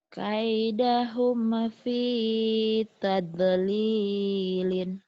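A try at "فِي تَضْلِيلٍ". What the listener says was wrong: Kaidahum fi taub. Jangan tade. Taub. taub lilin. fi taub lilin. Kaidahum fi tablilin. Taub. Jangan tade ya. Taub.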